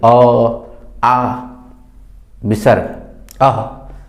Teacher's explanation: अ, आ और विसर्ग ये कंठों से बोले जाते हैं